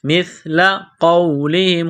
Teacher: سا پڑھتے وقت زبان تھوڑی سی باہر نکالیں گے، سا کو نرم پڑھیں گے